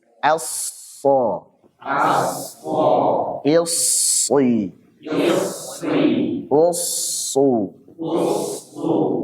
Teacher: tebalnya itu karena terangkatnya pangkal lidah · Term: sad